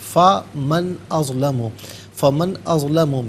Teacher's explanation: من میں نون ساکن ہے، اس کے بعد حرف حلقی حمزہ آ رہا ہے تو نون ساکن کو یہاں اظہار کے ساتھ پڑھیں گے، غنہ یا اخفا نہیں کیا جائے گا.